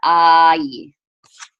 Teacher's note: when you have the ah vowel with a yud after it, it goes I, just as if you went ah and then added a y sound, I. So those were the two main things we learned in this chapter, and we're gonna review that second one, the vowel combination, a little bit in these last 4 lines.